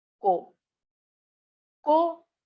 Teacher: sometimes it is perceived as a low tone and sometimes it is perceived as a falling tone